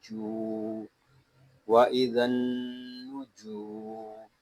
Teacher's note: یہاں جیم کو ہم ایک الف تک کھینچ کر پڑھیں گے کیونکہ یہاں پہ واو مدہ ہو رہا ہے